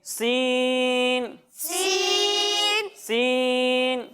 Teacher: جب ہم سین کی ادائیگی کریں گے تو اس میں سیٹی کی آواز آئے گی